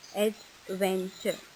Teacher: you will notice that the pitch of your volume goes up when you read the second syllable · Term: Word stress